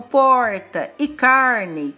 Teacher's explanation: No interior de São Paulo, palavras como porta e carne, com esse R bem puxado, chamado R retroflexo